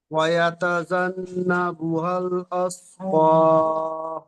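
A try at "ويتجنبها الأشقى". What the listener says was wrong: এখানে আস হবে না, আশ। শিন। শিনের মাখরাজ পড়েছিলাম জিহ্বার বিজকান সেই সোজা উপরে তালুর সাথে লাগিয়ে চেপে ধরে আশ।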